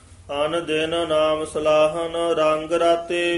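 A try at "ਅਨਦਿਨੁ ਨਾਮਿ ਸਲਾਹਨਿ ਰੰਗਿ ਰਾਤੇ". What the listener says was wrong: जिहड़ा आन दिन पादा ना ए विच डैश दे के उचारण करना है छेती नहीं बोलदा आन दिन नहीं कह देना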